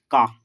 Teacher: का वर्ण का उच्चारण स्थान कंठ, का, कंठ से आवाज आती है